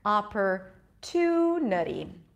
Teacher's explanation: Okay, so the two is the primary stress. The ah is a secondary stress because I actually make a pure vowel there.